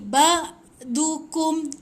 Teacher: Dia keluar dekat tekak, bukan dekat hidung. Ingat. Dan dia ada lemak sikit.